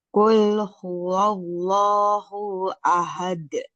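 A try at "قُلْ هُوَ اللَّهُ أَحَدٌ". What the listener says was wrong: Hu ahad. Hu-nya jangan tertahan. Qul huwallahu ahad.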